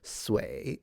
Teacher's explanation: Sometimes when you have speakers from, of course, southern accents in Mandarin, usually ditch the sh sound